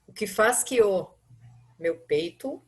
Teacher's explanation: se eu for ler rapidamente o verso, eu vou perceber direitinho que as vogais acabam no som se juntando.